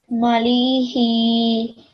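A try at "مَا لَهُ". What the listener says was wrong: It's not lam with kasra, it's lam with fatha.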